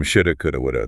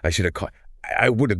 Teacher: The have gets completely hollowed out and reduces to just a schwa sound.